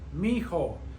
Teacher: those two I's in the middle, they blend together and it makes one sound. That's why it sounds like two syllables.